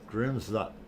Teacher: The N is kind of a tongue in the roof of the mouth in the back there. Yeah, a very, very short, very tiny little N in the back.